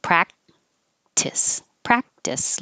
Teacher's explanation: i don't really release my k